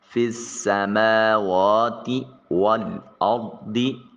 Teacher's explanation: فِی السَّمَاوَاتِ وَالْأَرْضِ، را ساکن اور اس سے پہلے والے حرف کے اوپر زبر ہے، را کو مفخم موٹا اور پر کر کے ادا کیا جائے گا